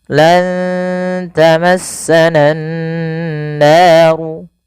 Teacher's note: Kemudian pada lafal nan naru, usahakan kita menahan bunyi suara nunnya karena pada lafal ini ada bacaan gunnah, yaitu dengan menahan suara nun dan memasukkan ke rongga hidung kita